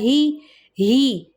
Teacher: ای کی ساؤنڈ چاہیے، اے کی ساؤنڈ نہیں چاہیے، ہے نہیں کوئی بولے گا، ہی، اعوذ باللہ، ٹھیک ہے۔